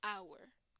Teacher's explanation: the H here does not have a sound so the sound that comes first is a vowel sound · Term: Silent Age